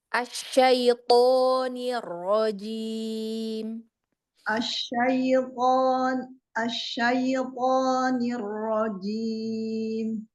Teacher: Tonya coba dibuka lagi, jangan to, jadi tidak tertutup ya.